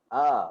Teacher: Itu huruf hamzah, huruf yang keluar daripada pangkal kerongkong kita, dan bunyi dia adalah a